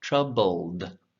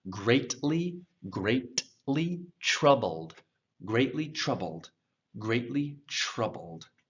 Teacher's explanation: right before it gets to the soft palate [Music] so that that tongue the tip is making the l sound and then it rolls right back up to make the d sound